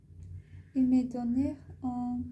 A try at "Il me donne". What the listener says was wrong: Non, pas il me donnait. Il n'y a pas d'accent. Il me donne. Parce qu'il y a N-N-E, alors donne. Donne.